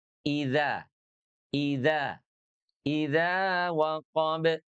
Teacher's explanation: Ujung lidahnya nempel ke langit-langit. Idza, i-nya dari tenggorokan bawah, zalnya dari ujung lidah dengan, gigi seri atas.